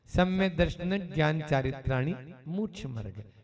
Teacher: ज्ञान शब्द आने से न पे हमने थोड़ा सा जोर दे दिया, ठीक है ना, यहाँ पर तो उसको ट्रेस कर दिया हल्का सा। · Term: संयुक्त आद्य दीर्घम